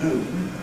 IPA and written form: -ˈnuːn (afternoon)